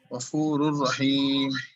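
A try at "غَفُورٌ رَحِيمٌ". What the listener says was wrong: غفور نہیں غفورر. جی رحیمہ رحیم نہیں رحیمہ. دو زبر ہے نا میم پہ تو رحیمہ پڑھیں گے.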